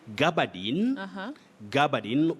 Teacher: You can say Gabardine, Gabardine with the primary stress at the beginning or the onset